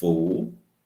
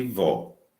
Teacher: em voo eu tenho a vogal o fechada em vó eu tenho a vogal aberta